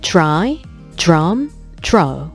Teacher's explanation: 이번에 이 DR 발음은 즈 소리가 살짝 들어가게 됩니다.